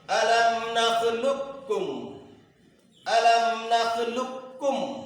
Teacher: قاف ساکن کو کاف متحرک میں ادغام کر کے پڑھا جائے گا